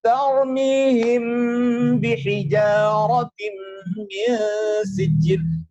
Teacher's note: Makhrajnya huruf mim lisyafatainil waw ba'un mimu. Yaitu ada di kedua bibir yang tertutup. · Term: ikhfa syafawi